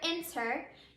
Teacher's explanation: you can hear that our accented syllable is the first syllable in that word it is not our last syllable so since that's the case